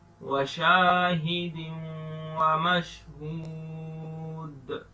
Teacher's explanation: الف مدہ ہے, اس کو لمبا کریں گے الف کے برابر